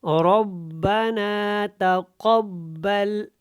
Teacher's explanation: یہاں پہ قاف موٹا ہے، یہاں پہ تا باریک ہے